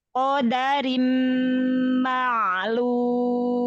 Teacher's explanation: Ko angkat pangkal lidah. Qodarim, da syiddah jahar pada huruf dal